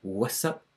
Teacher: So we don't get the T in what's anymore, it's just what's up.